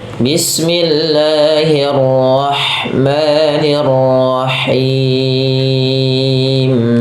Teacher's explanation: Bagaimana cara pelafalan huruf ha kecil? Yaitu dimulai dengan apa? Dari tenggorokan tengah kita.